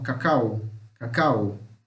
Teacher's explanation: A gente fala um O puxando pro U, cacau. Parece que a gente fala cacau mesmo, cacau, tá?